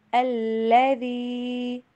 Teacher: الذی، لام کے اوپر سٹریس دیں گے، الذی، ذال کا جھکاؤ زا کی طرف نہیں ہونا چاہیے